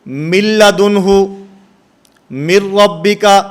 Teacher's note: نون ساکن اور نون تنوین کے بعد لام اور را ان 2 حرفوں میں سے کوئی حرف آئے گا تو وہاں پر بھی غنہ زمانی نہیں ہوگا